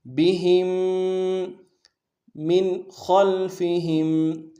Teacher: میم کو نون ساکن کے ساتھ ملانا ہے لیکن یہاں پہ نون ساکن میں اظہار ہوگا، غنہ نہیں ہوگا کیونکہ آگے خا جو ہے حروف حلق میں سے ادا آ رہا۔